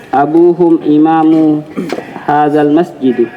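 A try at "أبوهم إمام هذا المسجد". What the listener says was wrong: Masjidi, kasrah. Ya, imamu hadzal masjidi.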